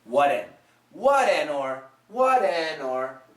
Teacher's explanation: think of the flap t as basically a d a very short quick d